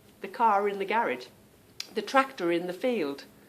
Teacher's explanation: r comes in the car in and it's the car Rin the r seems to go on to the beginning of the word not the end of my car word